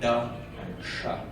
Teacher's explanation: the D and the sh sound are both produced by retroflexing your tongue. That means moving your tongue as far back as you can.